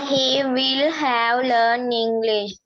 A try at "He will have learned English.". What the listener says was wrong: learn කියන්න එපා, learned Yes, he will have learnt English. He will have learnt English.